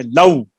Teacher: لو يردون نہیں لو لام کی زبر کو کھینچے. لام کی زبر کو زیادہ نہیں کھینچے